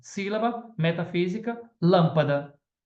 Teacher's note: a sílaba tônica é a antepenúltima da palavra